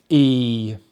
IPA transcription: iː